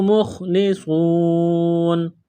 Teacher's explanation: اس خا کو موٹا کرنا ہے، صاد کو موٹا کرنا ہے، جب یہاں پر وقف کریں گے تو نون کو ساکن کریں گے۔